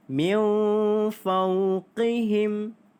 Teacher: nun mati bertemu dengan huruf fa, iaitu kita dengung dua harakat kerana ikhfa hakiki.